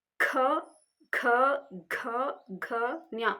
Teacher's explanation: ಕಂಠದ ಸಹಾಯದಿಂದ ಉಚ್ಚಾರಣೆ ಮಾಡ್ತಾ ಇದ್ದೀರಿ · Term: ಕಂಠ್ಯಕ್ಷರ